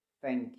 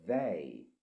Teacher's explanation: So there's a difference between they and thank you or thank. So you hear the word thank it's a bit silent but they has a buzzy sound. So it's uh it's got two different sounds.